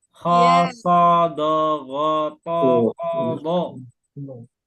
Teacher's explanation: mengucapkan huruf diiringi dengan terangkatnya pangkal lidah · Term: Isti'la